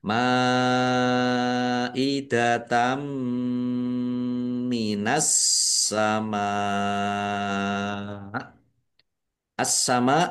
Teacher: alif lam syamsiyah karena tidak dibaca langsung masuk ke huruf berikutnya yaitu sin · Masuk dengan mendengung. Yaitu mendengung mim ditandai mimnya ada tasdidnya ditahan biar tampak mendengungnya. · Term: idgham bighunah, idgham bi gunnah